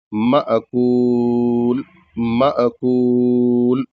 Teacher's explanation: यहां पर मीम के बाद हमजा साकिन है। यहां झटके से पढ़ेंगे हल्का झटके से। और ये कायदा ये है कि जहां पर भी दरमियान में या कहीं पर भी हमजा अगर साकिन हो तो वहां उसको झटके से पढ़ा जाता है।